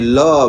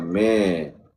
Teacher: Lam baris fathah bunyi la bukan le. Mim baris fathah bunyi ma bukan me.